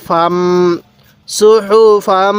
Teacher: নাকের বাঁশি দ্বারা গুন্নাহ করবো